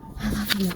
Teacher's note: they have such a soft voice. It's kind of like a breathy voice.